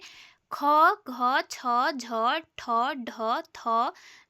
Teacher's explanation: जैसे महाप्राण और अल्पप्राण। महाप्राण इन वर्णों के उच्चारण में प्राण वायु अधिक मात्रा में बाहर निकलती है।